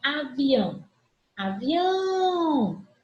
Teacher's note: a última sílaba tônica